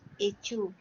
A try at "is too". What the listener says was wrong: Just don't forget when you're saying your is to pronounce the S.